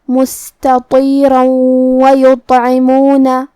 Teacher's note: اگر ہم یہ آیت کو اگلی آیت کے ساتھ ملا کے پڑھے تو جو کہ واو کلمت وَيُطْعِمُونَ میں دوسری والی آیت میں حروف الادغام بغنہ میں سے ہے، اور ادغام کا معنی ہے حرف کو حرف میں داخل کرنا، لہذا ہم یہ تنوین کو واو میں ملا کے غنہ اور تشدید کے ساتھ یہ حکم کو ادا کریں گے